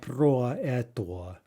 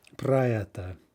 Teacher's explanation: any o we have in a preposition, like in pro, which means about, is going to be reduced to ah, right? So pra, and then eta, right?